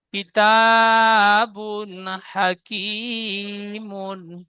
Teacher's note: বার উপরে দুপেশ এসেছে, দুপেশটি তানবিন, তানবিনের পরে হরফে হালকির 6টি অক্ষরের মধ্যে হা এসেছে, তাই তানবিনের আওয়াজকে বিনা গুন্নায় জাহির করে তাড়াতাড়ি পড়বো, একে ইজহার বলে। হার উপরে জাবার এসেছে, জাবারটি হারাকাত, হারাকাত তাড়াতাড়ি পড়তে হয়, টান দেওয়া নিষেধ।